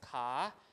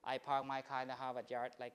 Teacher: no R right in post vocalic position after a vowel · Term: R less